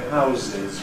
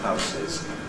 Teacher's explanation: Most of us say /ˈhaʊzɪz/ with the voiced instead of /ˈhaʊsɪz/.